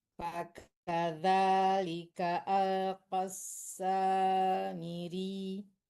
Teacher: Miri ditekan aja terus dilepas, jangan dipanjangkan. Kalau dipanjangkan tasdidnya hilang jadinya miri.